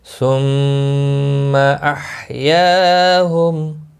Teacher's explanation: فقال لهم الله موتوا ثم احیاهم، ثم میم مشدد پر غنہ ہوگا، ہا وسط حلق والا ہے، اس کی ادائیگی ضروری ہے. یا الف مدہ ہے، ایک الف کے برابر کھینچ کر پڑھیں گے، میم ساکن رہے گا وقف کی صورت میں، اور ملانے کی صورت میں اظہار شفوی ہوگا.